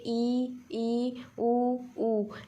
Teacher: जैसे आप लोग प्रैक्टिकली करके देखिए, बोलिए ई, ऊ ऐसा बोलेंगे तो जो मुंह है हम लोग का लगभग बंद रहेगा, बहुत थोड़ा सा खुला रहता है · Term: समृद्ध स्वर